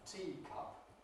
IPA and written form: ˈtiː kʌp (teacup)